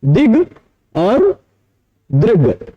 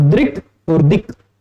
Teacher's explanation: तो क्विन प्रत्यय से कु से ड के स्थान पर अगर कु होगा यानी कवर्ग होगा, तो क्योंकि ड संवार नाद घोष अल्प प्राण अननुनासिक है, वैसे ही ग भी संवार नाद घोष अल्प प्राण अननुनासिक है। ऐसा बाह्य प्रयत्न के आधार पर हम ड के स्थान पर कर देंगे ग।